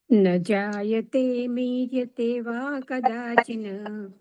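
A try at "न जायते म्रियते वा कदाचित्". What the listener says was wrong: કદાચિત આપણે સંધિ છૂટી પડે એટલે નકારનો ટકાર થાય.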